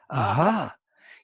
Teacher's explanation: You make by breath a friction in the vocal cords. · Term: semi-vowel of ah